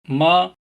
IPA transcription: m